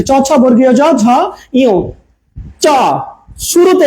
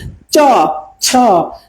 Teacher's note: আমাদের এই যে জিহ্বার মূল মাঝের অংশটুকু ওপরের তালুকে ছুঁয়ে দিচ্ছে ওপরের তালুকে ছুঁয়ে দিচ্ছে চেন চেকে কিন্তু জিহ্বাটা উপরে চাপ দিচ্ছে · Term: তালব্য বর্ণ